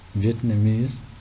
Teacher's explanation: Vietnamese, fourth syllable takes the stress.